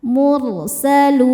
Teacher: Maka lamnya panjang boleh dua atau empat atau enam harakat. Asal konsisten dalam sekali baca. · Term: mad arid lukun